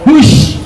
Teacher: Kalau sya sifat hurufnya tafasyi. Tafasyi itu menyebar angin.